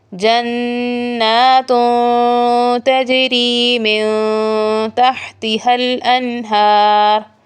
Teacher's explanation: یہاں لفظ جنات میں تا کے اوپر تنوین ہے اور تنوین کے بعد حروف اخفاء میں سے حرف تا آ گیا ہے تو یہاں بھی اخفاء ہوگا، نرم غنہ